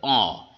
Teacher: কন্ঠ থেকে যখন ধ্বনিটা উচ্চারিত হবে তখন খানিকটা ধ্বনি নাকের ভিতর থেকে প্রবাহিত করো। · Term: অনুনাসিক স্বরধ্বনি